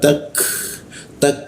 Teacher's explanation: lidahnya kita turunkan sehingga udara terbuka dan ada hembusan udara